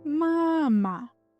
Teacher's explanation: I make the stressed vowel longer and stronger.